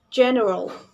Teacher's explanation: This word has the main stress at the beginning of this word, or it calls primary stress.